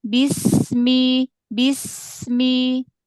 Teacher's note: dialirkan lagi jangan terputus sampai ketemu Mi